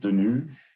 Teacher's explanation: It has a very slight increase in pitch, but it's not drastic enough to eliminate the phrase final vowel devoicing